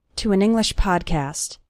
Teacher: You can see that the words to and English all flow together.